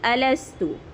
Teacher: پیش کی حرکت جلدی پڑھیں گے، آواز آگے کو جائے گی